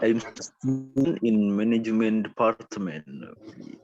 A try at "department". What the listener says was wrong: Terakhirnya loh, terakhirnya. Itu maksud saya, setiap yang bunyi T di akhir, kalau bahasa Inggris itu harus disebut kayak gini.